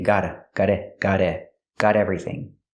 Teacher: we can change the T to a fast D because it's between vowels